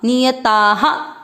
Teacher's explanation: आ की मात्रा है तो विसर्ग को पढ़ेंगे हा